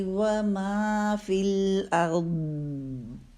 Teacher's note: فی الارض میں دیکھیں را کا ٹائم کم ہے، ضاد کا زیادہ ہے